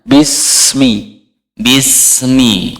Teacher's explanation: huruf sin bukan huruf Qalqalah jadi mengalir Pak jangan dipantulkan jangan Bismi Bismi Bismi bismillah kemudian sinnya itu di seret dulu